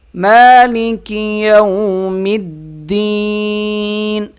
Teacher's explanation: میم کو ایک الف کے برابر کھینچ کے پڑھیں گے